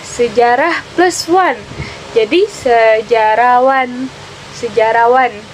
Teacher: Pelepasan fonem adalah peristiwa hilangnya fonem akibat proses morfologis. Misalnya hilangnya bunyi H pada proses pengimbuhan dengan akhiran wan pada kata sejarah